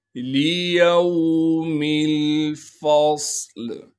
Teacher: لِيَوْمِ الْفَصْلِ، لام کو بغیر کھینچے پڑھیں گے، یا کو واو ساکن سے ملائیں گے، میم کو آگے لام ساکن سے ملانا ہے کیونکہ لام ساکن ہے، فا کو صاد ساکن سے ملائیں گے، صاد میں سیٹی ادا کریں گے اور صاد کو موٹا کر کے پڑھیں گے، لام کو وقف کی حالت میں ساکن بنا دیں گے۔